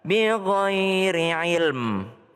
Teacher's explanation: Kalau berhenti di ilm jangan hilang mimnya, jangan bighairi ilm, enggak, tapi ada mimnya di belakang.